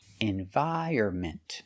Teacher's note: The stress is on the second and fourth syllable.